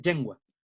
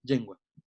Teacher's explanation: lengua se dice yengua, porque viene de la palatalización de esta L inicial